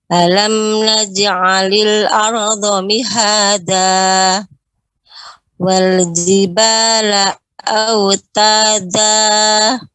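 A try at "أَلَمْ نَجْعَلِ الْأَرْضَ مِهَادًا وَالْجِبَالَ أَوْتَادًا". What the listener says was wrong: Ya, la dibaca dengan pendek. Langsung. Ya, la-nya tidak ada jeda di situ.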